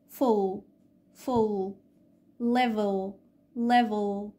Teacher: الدارك L، وبتكون موجودة في نهاية الكلمة أو بعد الفاول